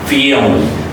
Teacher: Because the first A is a stretched, okay? And the last L is a dark L, so it's pronounced family.